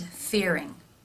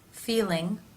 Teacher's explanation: The lips are more rounded for the R sound, and the tongue tip for the L is, as expected, raised to the roof of the mouth. In the R sound, you can see more dark space in the mouth because the tongue is pulled further back.